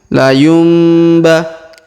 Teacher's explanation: Perhatikan huruf nun sukun bertemu ba. Maka nun sukunnya berubah menjadi mim ya. La yumbah. Ditahan dan didengungkan 2-3 harokat.